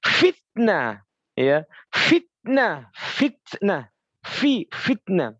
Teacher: ujung gigi nempel di di bibir-bibir bawah